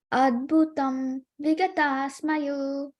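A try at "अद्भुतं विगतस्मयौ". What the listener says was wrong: It's abhutam, right? It's not adbhutam. It's abhutam vigata smayo.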